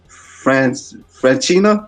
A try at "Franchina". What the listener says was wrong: It's actually Franchina. There's no CH in Italian, so Franchina.